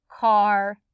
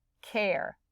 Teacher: if you hear r at the end you leave it because if you add the e it changes the r to an air sound